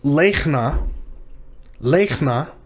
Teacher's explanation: because the long vowel is in a stressed syllable, the shava is silent. So this word is lechna, lechna, And notice it's not lechna, it's lechna.